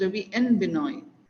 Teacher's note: So when and comes in between, the D is not heard at all.